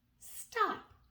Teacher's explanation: there is a t there with the S even though they really blend together · you almost lose the individual sound of the T, but it's there